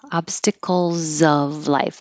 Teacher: the S is a z and it connects to the O